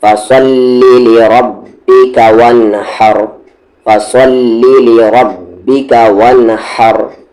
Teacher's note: रा हेवी होगा क्योंकि इसकी आवाज़ ऊपर जा रही है